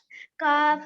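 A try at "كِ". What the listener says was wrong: काफ जेर की की इसको लंबा नहीं करिए।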